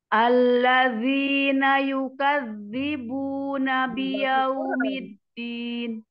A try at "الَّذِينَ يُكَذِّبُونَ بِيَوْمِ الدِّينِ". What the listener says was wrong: Tahan dulu di dalnya itu, jangan langsung dilepas.